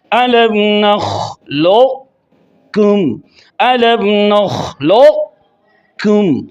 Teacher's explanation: اسی طرح الم نخلقکم، یہاں لام کے ساتھ قاف کے موٹا ہونے کی صرف باقی رکھنی ہے اور بغیر قلقلہ کیے ہوئے کاف پر تشدید کو بھی واضح کرنا ہے۔ الم نخلقکم، الم نخلقکم، یعنی لام کے بعد زبان کی جڑ اوپر قوف کے مخرج میں لگے اور اس کے بعد جو ادا ہو وہ کاف ہو، تاکہ یہ ادغام ناقص کی تعریف پوری ہو جائے۔